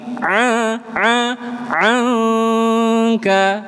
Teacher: Bukan wawna ang tapi a a anka. Nun bertemu kaf. Ikhfa. Samarkan ditahan agak lama.